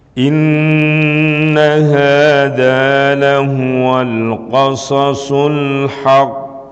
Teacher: agak diperjelas di huruf q yang ditasdid Jangan sampai tidak ada qalqalahnya